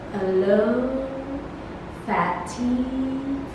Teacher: Its quality is that of a central vowel neutral lip position, having in non-final positions with the tongue raised.